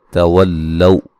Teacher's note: वाव को लाम से सख्ती से मिलाएंगे